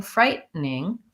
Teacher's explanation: frightening is a reduction, so that's a syllabic N